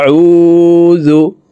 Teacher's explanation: ও এক আলিফ টেনেই পড়তে হবে, কারণ পেশের বাম পাশেই জজমালা ওয়াও মদের হরফ, ডান দিকের হরকতকে এক আলিফ টানিয়া পড়িতে হয়।